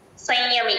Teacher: య ముందు సున్నా ని సగమే పలుకుతాం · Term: నాసిల్ సౌండ్